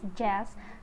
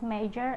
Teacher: J is voiced alveopalatal affricate